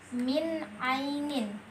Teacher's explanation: nun mati bertemu dengan a maka dibaca jelas tanpa didengungkan